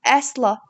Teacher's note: Əsla sözündə vurğu birinci hecaya düşür.